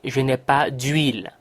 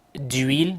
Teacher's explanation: huile begins with a silent H. So we'll make the liaison and the E of de will disappear for an apostrophe.